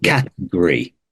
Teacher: the O is nowhere to be seen